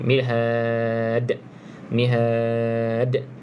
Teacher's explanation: satu daripada lima huruf Qalqalah kena ada lantunan sedikit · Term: Qalqalah kubra